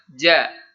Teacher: huruf ja ini adalah huruf yang berada di tengah lidah. Jadi, hurufnya sangat kuat sifatnya.